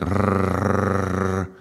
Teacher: If we take the R and we just continuously chant it like rrr, it's like an engine